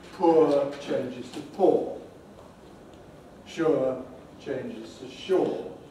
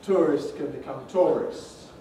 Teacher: more and more in england people pronounce these words with an or instead of with ur